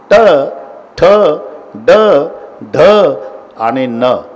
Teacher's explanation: जीभ वाकडीहून वरच्या टाळूला स्पर्श करते प्रत्येक वर्णाच्या. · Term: तालव्य